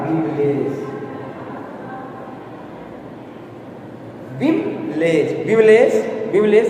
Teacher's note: विमलेश विमलेश विमलेश यानी लेस पे ज्यादा जोर पड़ रहा है।